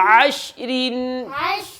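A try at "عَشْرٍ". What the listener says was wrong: आइन भी निकाले और रा को मारूफ करें। रा को पुर करना है, हाँ। वक्फ की सूरत में रा पुर होगी।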